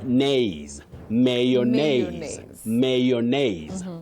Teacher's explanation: Then the stress comes in nays